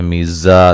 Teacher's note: زا کو سیٹی سے ادا کریں گے، سختی سے ادا کریں گے، الف مدہ ہے.